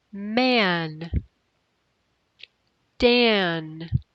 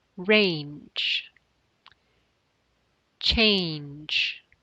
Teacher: You hear the ah sound. When the ah vowel is followed by ng, the ah vowel sounds more like a.